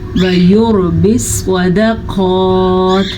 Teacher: را ساکن سے پیچھے والے حرف پہ پیش ہے تو را ساکن پر پڑھی جائے گی · سواد کو پر پڑھیں گے. سواد ہمیشہ ہی پر پڑھا جاتا ہے. اور قاف کو پر پڑھیں گے.